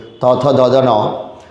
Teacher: আরেকটু সামনে দন্ত বলে ত বর্গের ধ্বনিগুলো সব দন্ত ধ্বনি